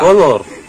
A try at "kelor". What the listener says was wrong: Bukan kolor, kolor itu astaga. Sayur kelor.